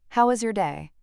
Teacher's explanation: Flatter intonation possibly while multitasking shows routine politeness without deep engagement.